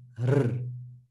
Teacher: The letter ra will be just r. It's a tongue flap, r. Finally, the letter zai will be z, z.